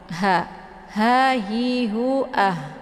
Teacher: Ini bukan ha ya, tapi ha besar. Posisi makharijul huruf ha ini tepatnya di tenggorokan bagian bawah sejajar dengan posisi makharijul huruf hamzah